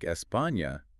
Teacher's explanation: It's basically just the stressed syllable in a word where we put the emphasis when we speak. Ah, so in a word like España, the emphasis is on PA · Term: tonic syllable